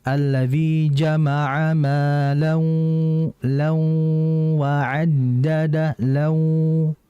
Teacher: Dengungan di hidung ketika memasukkan ke wa. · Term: ghunah, idgham naqis